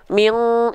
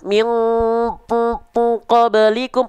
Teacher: dengungan yang semakin kuat itu dia suaranya registernya itu di hidung ya m jadi Arahkan ke atas m pasti dia hilang suaranya